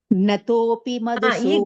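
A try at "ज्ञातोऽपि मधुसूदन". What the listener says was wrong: There is no ig is there.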